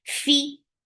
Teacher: Fi hums, and after hums, you are completing the sound with your kasra. The kasra sound should be very, very short.